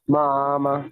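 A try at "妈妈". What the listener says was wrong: आप जब word pronounce करने लगती हैं तो बच्चे आप थोड़ी सी स्ट्रेस दे रही हैं, वो नहीं देनी। इतना इतना लॉन्ग करने की जरूरत नहीं है, मामा बस।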